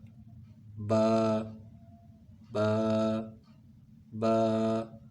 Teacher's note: با دونوں ہونٹوں کے تری والے حصے سے ملانے سے ادا ہوتا ہے